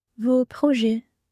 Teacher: We don't pronounce the S.